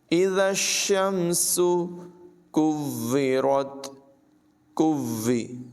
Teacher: کاف کو باریک پڑھیں گے اور واؤ کے ساتھ ملائیں گے۔ واؤ مشدد ہے، اور یاد رکھیں مشدد حرف ہمیشہ اپنے پچھلے حرف سے ملا کر پڑھتے ہیں اور ذرا رک کر اس کو ادا کرتے ہیں۔